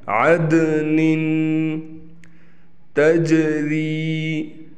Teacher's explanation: دال قلقلہ میں سے ہے، لہٰذا اس پر آواز کو ہلا کر پڑھیں گے